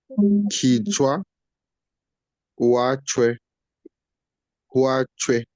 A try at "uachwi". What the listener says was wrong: No, now the last part, we're not bringing out the H clearly. So it's uachwi. Bring it clearly.